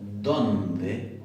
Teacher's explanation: la primera D es fricativa y la segunda D es oclusiva. Y las tengo las dos en una misma palabra.